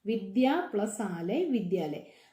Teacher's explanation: ആദ്യത്തേതിന്റെ അവസാനം ആ എന്നുള്ള ശബ്ദവും രണ്ടാമത്തതിന്റെ തുടക്കത്തിൽ ആ എന്നുള്ള ശബ്ദവും കൂടി ചേരുമ്പോൾ വിദ്യാലയ് എന്നുള്ള ശബ്ദമാണ് വരുന്നത് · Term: സ്വർസന്ധി